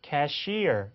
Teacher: 이렇게 해서 뭐 우리가 접수개원을 캐셔 이렇게 얘기하는데 실제 캐셔라는 단어의 발음은 cashier 이렇게 이음절에 강세가면서